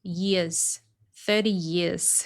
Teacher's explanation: sometimes they drop the R near the end of a syllable.